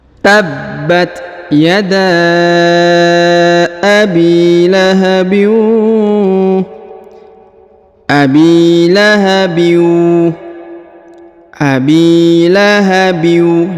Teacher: disamarkan dan kemudian dileburkan ke huruf wau tanwinnya ya tanwinnya nya dileburkan ke huruf wau ditahan dan ditekan dua harakat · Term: dileburkan ke huruf waw